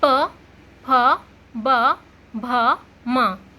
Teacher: ओठ चुपक रहा है ना, दोनों ओठों के मिलने से बोले जा रहे हैं। बिना ओठ चुपकाए से बोल ही नहीं सकते आप इन्हें बिना ओठ चुपकाए। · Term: ओष्ठ ध्वनियाँ